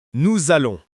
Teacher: Attention à la liaison. Si vous prononcez bien, ça fait un son Z entre nous et allons.